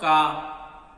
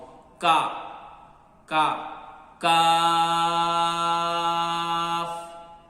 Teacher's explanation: But Kaf sound is light. Be careful, don't pronounce with heavy sound.